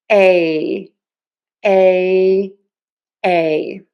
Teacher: For your tongue, the tip of your tongue is low and the back of your tongue is pulled high up. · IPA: /eɪ/